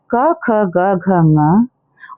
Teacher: पहला है कंठ्य, जो कि गले से उच्चारित होते हैं